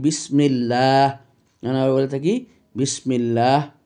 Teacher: যদি আল্লাহ শব্দটির পূর্বে যদি জের থাকে তখন আল্লাহ শব্দটি লফজে জালালা চিকন হয়ে আসবে